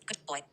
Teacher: If you clearly pause between the two words, GD comma, slash B slash. Now assimilation does not happen. You hear a clear D sound. Why? Post lexical rules need connected speech.